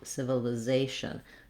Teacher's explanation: the l is going to be more of a front light l because it's starting this li syllable